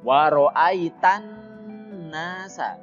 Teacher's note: Nah, di huruf nun itu ada nun bertasydid, hukumnya adalah gunnah. Jadi nunnya harus didengungkan dan ditekan dulu. Wa ro'aitan nasa, jangan langsung.